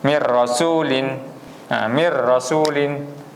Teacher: Terus masuk kepada huruf ra nah seolah-olah Nun tu tak ada